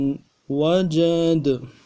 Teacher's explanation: دال حرف قلقلہ میں سے زبر کو جزم کے ساتھ بدلیں گے اور قلقلہ کریں گے۔